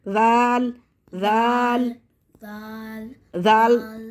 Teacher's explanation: जबान ऊपर पीछे वाले दांतों के पीछे जो मसूड़े हैं वहाँ पे लगेगी